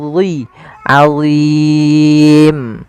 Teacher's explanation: Kemudian pada lafal azim ada bacaan mad arid lisukun, dan hati-hati dalam lafal dha jangan dibaca dengan azim, nanti diganti dengan huruf zai jadinya, atau ajim dengan huruf jim, salah. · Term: huruf dhi